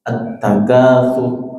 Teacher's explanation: Sur itu ra-nya kan dhamma, tapi disukun karena wakaf, ra-nya tebal.